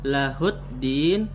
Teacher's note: Lahuddin ini terdapat alif lam. Alif lam cuma tidak terbaca. Di dalam tajwid disebut alif lam syamsiyah.